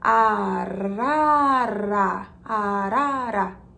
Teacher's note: a língua bate rapidamente atrás dos dentes